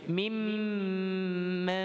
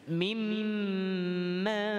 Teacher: Dibaca dengan bertemu dengan mim tasydid, dengung pada mim.